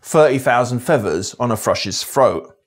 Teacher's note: TH-fronting results in the /θ/ sound in other dialects being replaced with an /f/ sound